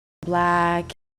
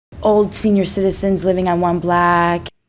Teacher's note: in cities in the northern US, block was starting to sound like black. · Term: Northern Cities Vowel Shift